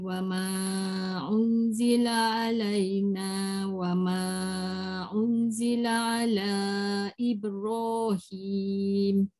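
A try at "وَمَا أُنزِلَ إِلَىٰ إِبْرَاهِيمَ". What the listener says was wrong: un, un tu dengung. Wa ma unzila ala. Panjang sikit. Ala.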